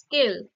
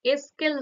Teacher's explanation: আরো যেমন স্কেল, স্কেলটাও দেখো শুরুতে সংযুক্ত ব্যঞ্জন, সেটাকে উচ্চারণের সুবিধার জন্য, কিংবা ওই উচ্চারণের প্রস্তুতি রূপে শুরুতে দেখো সংযুক্ত ব্যঞ্জনের আগে এ বলে এই স্বরধ্বনিটা যুক্ত হয়েছে, ফলত স্কেল থেকে এস্কেল হয়ে গেছে। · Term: আদি স্বরগম